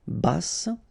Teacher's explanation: final E not pronounced, but then you pronounce the double S, so S, basse.